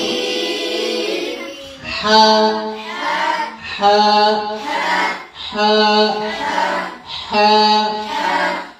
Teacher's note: রিখওয়া নরম হবে, শক্ত করা যাবে না, চাপ দেওয়া যাবে না।